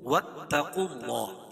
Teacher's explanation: قاف کو پر پڑھیں گے اور اللہ کے لام سے پہلے پیش ہے تو اللہ کا لام پر پڑھا جائے گا